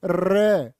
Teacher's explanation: जीभ कांप जाएगी तुम्हारी। र को प्रकंपित भी बोलते हैं और लुंठित भी कहते हैं।